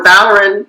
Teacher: the second syllable is AR, so that's a short syllable, which means the stress goes on the first syllable